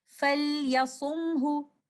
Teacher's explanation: This word is starting with the word letter Fa, followed by Lam Sakina. This Lam Sakina is Lam al-Amr, and we will recite this Lam Sakina clearly